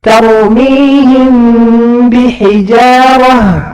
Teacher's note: ada padanya gunnah, dua harokat yang harus keluar lewat hidung, khayshum.